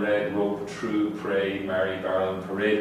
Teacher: in all known varieties of English, you'll get an R in red, rope, true, pray, marry, barrel, and parade, because there's a vowel coming next